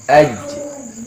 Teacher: Tengah lidah nyentuh langit-langit atas jangan sampai keluar huruf c-nya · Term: huruf Jim